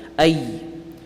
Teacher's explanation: You can really feel the tongue touching the top of the palate in the ya.